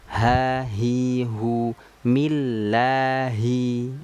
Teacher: Ha besar ya. Ha besar itu keluarnya dari tenggorokan bawah